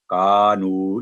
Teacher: جتنی آواز لمبی کا کی 2 سیکنڈ اتنی نو کی